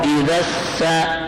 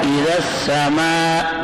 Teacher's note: حمزہ زیر ای, اب زال کے بعد پہلا الف بھی نہیں پڑھتے, دوسرا حمزہ بھی نہیں پڑھتے, لام بھی نہیں پڑھتے, زال کو سین سے ملا رہے ہیں